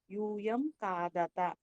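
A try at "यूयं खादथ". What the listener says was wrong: ఒత్తు థా వినిపించాలి.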